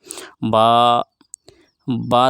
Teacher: बा दोनों होठों के तरी वाले हिस्से से अदा होता है। यानी भीगा हुआ हिस्सा।